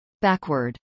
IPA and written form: ˈbækwɚd (backward)